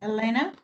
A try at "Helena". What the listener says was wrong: Helena. Helena. Remember, H, cuando tenemos H, Helena.